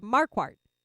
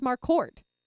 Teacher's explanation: i put a little more emphasis on the first syllable